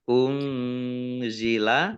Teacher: nun sukun bertemu dengan huruf Za bacaan Ikhfa dibaca samar-samar